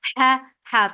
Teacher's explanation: As la for fatha open jaws. Ha from your throat for fatha open jaws, the sound is short.